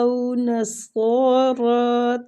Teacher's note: او نصارا او وہ لین ہو رہی ہے، اس کو بھی تھوڑا سا کھینچیں گے